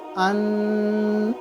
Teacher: اب میری زبان کی نوک اوپر لگ گئی تو نون ادا ہو گیا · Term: نون ظاہر